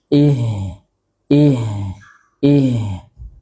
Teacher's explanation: Kemudian memiliki sifat di antaranya hams. Udaranya mengalir. Ih ih ih. Kemudian juga rakhawah ya karena memang suaranya mengalir ya, jadi makhrajnya juga tidak terlalu bertumpu kepada makhrajnya.